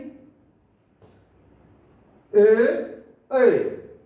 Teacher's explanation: ये हमारे कंठ और तालु दोनों से मिलकर बोले जाते हैं, इसलिए हम इसको कंठ तालु भी कहते हैं। कंठ तालव्य भी कहा जाता है ए और ए को।